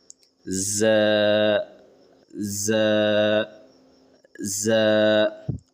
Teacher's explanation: زبان کے دونوں سائڈ تالو میں جا کے ٹچ ہوں گے اور آواز میں جھنجھناہٹ ہوگی. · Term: ز ساؤنڈ